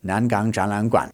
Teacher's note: So, if you were going to say it fast in conversation, it's not going to be Nangan Zhanlan Guan. It's going to be all second tones with one third tone at the end.